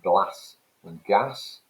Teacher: speakers from the midlands and the north i.e northumbria and mercia pronounce words such as glass to rhyme with gas